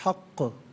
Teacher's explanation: अब यहाँ पर आप देखें, हक़ को जब वक्फ़ करेंगे तो हक़ पढ़ेंगे, और चूँकि क़ाफ़ हर्फ़ क़लक़ला है तो आवाज़ लौटती भी महसूस होनी चाहिए